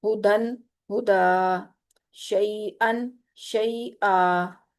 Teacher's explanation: دو حرکت جتنا کھینچیں گے، یعنی ایک الف کے برابر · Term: الف مدہ